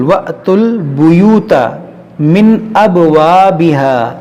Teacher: یہ تا کو لام سے ملائیں گے, یہاں پر تا لام پیش تل.